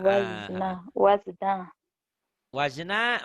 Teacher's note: Jangan jangan ada e-nya karena itu bukan huruf qalqalah